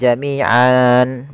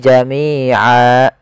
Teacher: Maka yang awalnya fathatain kita iwadkan menjadi fathah saja. Jadi a, seperti ini saja a. Sehingga a di sini panjang 2 harakat. Jami'a, bukan jami'an, bukan, tapi jami'a karena dia ada bacaan mad iwad.